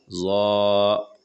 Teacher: زبان کے دونوں کنارے کو اوپر والا دانتوں سے لگا کر ظا ادا ہوتے ہیں. ظا، اور آواز موٹی ہوتی ہے.